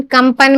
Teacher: कम, आधा माँ आ रहा है, इस बिंदी का मतलब आधा माँ है। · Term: अनुस्वार